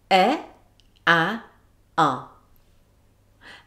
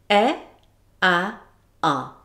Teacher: My jaw started out fairly closed for e, then moved to neutral for æ and then moved to opened for ʌ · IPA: e, æ, ʌ